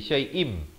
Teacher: Kulli syai'im, di sini idgham bi gunnah. Syai'in jadi syai'im, terus masuk beserta dengung dua harakat.